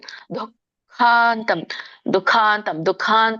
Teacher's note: ದು ಇಲ್ಲಿ ವಿಸರ್ಗ ಇದೆ ದು ಮುಂದುಗಡೆ ಸೋ ಸ್ವಲ್ಪ ಹ ಉಚ್ಚಾರಣೆ ಬರಬೇಕು